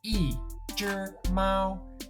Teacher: When E comes directly before a syllable or character that has a first, second, or third tone, E becomes fourth tone.